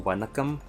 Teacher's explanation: So we can see that strong vocal cord for the N sound